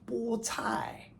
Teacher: you get also first tone bo, as in bo tai